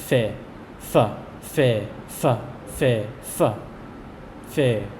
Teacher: This one is sometimes pronounced as a p sound, a hard P sound, but for the most part, today it is pronounced only as f.